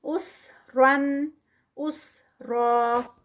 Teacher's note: را جو ہے وہ ہیوی ادا ہوگی اور 2 کاؤنٹس پہ روکنے پہ اسٹریچ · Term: را ہیوی